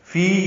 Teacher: فی یا مدہ ہے، اس کے بعد حمزہ آنے کی وجہ سے مد منفصل ہے. فی 4 حرکات لمبا کریں گے.